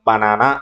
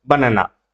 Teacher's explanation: ఈ ఏదైతే నా ఉందో దానికి ఈ యొక్క ప్రైమరీ స్ట్రెస్ అనేది ఫామ్ అవుతుంది